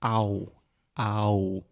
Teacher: So when you have that A-U combination, automatically your Portuguese-speaking brain, your Brazilian brain, just sees and visualizes A-U, and you say, ow, ow. So you are physically producing two different sounds. You are starting with an ah.